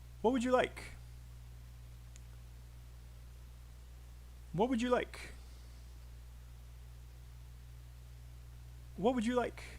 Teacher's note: I hope you guys notice that would and you are very small. They're unstressed. And it's easy to miss you or would if you didn't know that they were there.